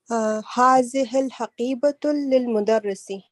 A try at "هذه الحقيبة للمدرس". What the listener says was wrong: Do not. Whenever there's alif lam, there's no tanween. هذه الحقيبة للمدرس.